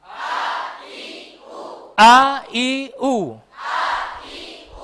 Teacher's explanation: Krana angele nepakno makhraj hamzah di tenggorokan bawah.